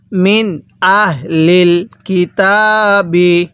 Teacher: নুন সাকিনের পরে হামজাটি হলো ইজহারে হরফ এজন্য আমরা নুন সাকিনটা স্পষ্ট করে পড়বো কিভাবে পড়বো মিন হামজা হা জবর আহ লাম লাম জের লিল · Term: ইজহারের হরফ